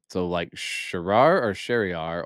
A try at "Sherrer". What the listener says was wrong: That is a fucked up last name. It's Sheer. It's one syllable.